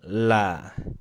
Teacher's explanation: Antum tempelkan ujung lidahnya ke gusi gigi seri atas terlebih dahulu udah nempel barulah dibaca la tempelkan lagi Li tempelkan lagi lu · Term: huruf lam